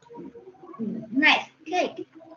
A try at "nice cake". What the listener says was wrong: À, nice cake. Cake. Các con sẽ bật âm cờ cuối cùng cái chữ cake này. Cake.